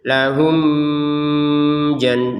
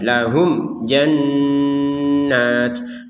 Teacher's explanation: Jadi, mim sukun tidak ada dengung sama sekali. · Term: dibaca jelas